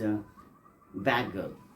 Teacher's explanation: In place of the, D, there come G. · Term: assimilation